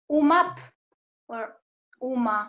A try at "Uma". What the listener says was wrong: No. Uma, there's no B or P.